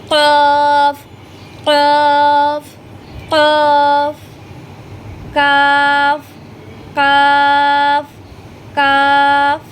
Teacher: জিহ্বার গোড়াটা আপনারা উপরের তালুর সঙ্গে লাগিয়ে উচ্চারণ করবেন